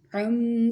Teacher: کہاں پر ہوتا ہے؟ ناک میں۔ کیسے؟ گنگنی آواز میں پڑھتے ہیں۔ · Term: غنّہ